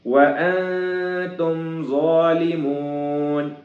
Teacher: نون کے اوپر ساکن ہے، جس کی وجہ سے اخفا ہوگا، ظا موٹا ہوگا